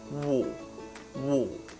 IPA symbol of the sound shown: wɔ́ː